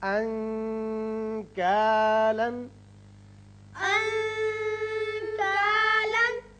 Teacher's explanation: انکالن۔ کاف، یہاں نون کا جو آپ اخفاء کریں گے تو تھوڑا سا غننے کی طرف زیادہ مائل ہوگی آواز